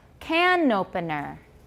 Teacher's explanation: If you link, we won't have problems. You can link the N to the next word because it starts with a vowel